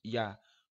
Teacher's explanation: O A é sempre vogal, este I fez um som de semivogal grudando ao A, ficou ia.